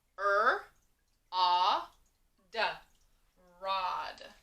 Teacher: notice when we said rod we hear ah like octopus so we hear regular o short o